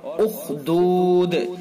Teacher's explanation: خا بھی حروف مستعلیہ میں سے، خا کو بھی پر کر کے پڑھیں گے۔ اور اخدود، وقف کی وجہ سے دال کو ساکن کیا ہے تو لہذا اس کے اندر قلقلہ کریں گے، اور اگر وقف نہیں کریں گے تو پھر قلقلہ نہیں ہوگا۔